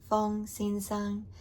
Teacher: Mr. Fong would be Fong Xin Sang, all first high tones, Fong Xin Sang.